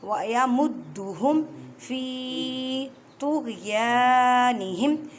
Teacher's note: یا کو ایک الف کی مقدار میں کھینچ کر پڑھیں کیونکہ یا الف سے پہلے زبر آ گئی ہے